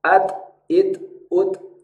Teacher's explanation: huruf ta punya kondisi di mana Dia memiliki sifat Hames percikan nafas Terutama ketika dalam kondisi sukun bunyinya adalah at it UT sedangkan huruf t